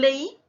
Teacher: Que se está dando al contrario de vocal cerrada, vocal abierta más vocal cerrada tildada, también tenemos que separar porque al momento de articular la palabra, ambas vocales van a tener la misma intensidad articulatoria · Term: hiato acentual